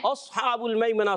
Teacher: ہا کی ادائیگی حلق کے درمیان والی حصے سے ہوتی ہے